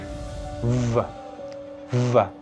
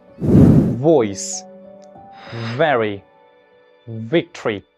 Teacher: There is vibration in your vocal cords. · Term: voiced labiodental fricative